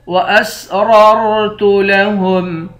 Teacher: واسررت لهم دونوں را کو موٹا پڑھیں گے